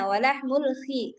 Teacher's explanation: Makhraj kho di ujung tenggorokan